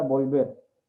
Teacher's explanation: La mayor fuerza de voz está en vol, pero no se está tildando porque es un acento prosódico, ¿sí?